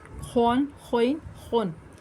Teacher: خا دو زبر خون، خا حروف مستعلیہ میں سے ہے، اس کو پر بھی پڑھنا ہے